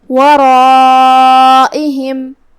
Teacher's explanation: مد واجب متصل کا معنی ہے کہ حرف المد اور اس کی وجہ جو کہ حمزہ ہے دونوں ایک ہی کلمہ میں ہو۔ ہم اپنی آواز 4 مد کے برابر لمبی کریں گے۔ دھیان رہے جو کہ اس سے پہلے را ہے تو ہمیں مد الف کو اور را کو تفخیم سے ادا کرنا ہے۔ · ہم را کو اور مد الف کو دونوں کو تفخیم سے ادا کریں گے ورائہم۔ یہاں مد واجب متصل ہے۔